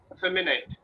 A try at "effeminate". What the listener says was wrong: Effeminate. We call it effeminate. The initially effeminate. There are four syllables, so we say effeminate, not neat. Net.